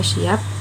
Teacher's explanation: Bunyi huruf P pada kata pagi diucapkan tidak sama dengan huruf P pada kata siap. Karena huruf P pada kata siap diucapkan dengan kedua bibir tertutup.